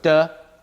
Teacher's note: not voiced not aspirated and it's dental not alveolar nah and love really said their dental not alveolar and so